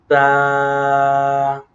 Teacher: یہ زبان کی نوک اور اوپر کے دانتوں کی جڑ سے ادا ہوتا ہے